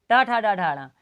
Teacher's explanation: अपना जीभ का अग्रभाग पहले पीछे जाएगा थोड़ा सा, फिर पीछे जाने के बाद तालु में स्पर्श करेगा, तालु में स्पर्श करने के बाद उसमें छुप के फटाक देने नीचे गिरेगा। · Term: मूर्धा